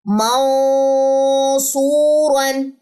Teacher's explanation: موٹا اخفا اور ساتھ میں موٹا لیٹر میں نے ادا کیا